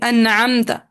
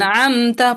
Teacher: ہم نے غنہ کو ٹائم نہیں دینا، صرف نون ساکن کی آواز کو واضح کرنا ہے اور آگے چل پڑنا ہے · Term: اظہار حلقی